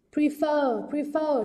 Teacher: trọng âm rơi vào âm tiết thứ hai